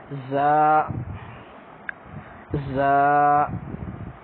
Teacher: تیز آواز آئے گی اس کی، ٹھیک ہے جی، سیٹی جیسی